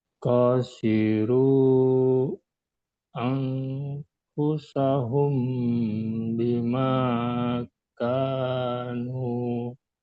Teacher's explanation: tadi bacanya Bapak samarkan nih nunnya, nun sukunnya disamarkan sama Bapak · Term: ikhfa